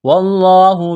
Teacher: لفظ اللہ کے نام سے پہلے زبر ہے، لفظ اللہ کے نام کو موٹا کرنا ہے ، الف سے پہلے زبر ہے، ایک الف کے برابر کھینچنا